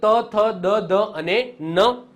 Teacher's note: દંત્ય એટલે કે જેમાં વ્યંજન બોલાતા જીભ દાંતને અડે છે